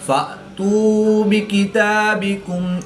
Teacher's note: حمزہ ساکن ہے تو اس کو جھٹکا دے کر پڑھیں گے۔